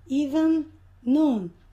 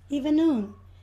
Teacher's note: Quando nós temos uma palavra terminando com um som, que é o mesmo som que a outra palavra inicia, eles acabam se juntando. Nós não pronunciamos duas vezes. Even noon. Acaba sendo uma vez só.